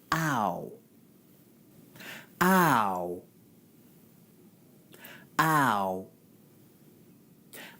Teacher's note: Ow is an example of a diphthong, which is where you have 2 vowel sounds in 1 syllable. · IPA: aʊ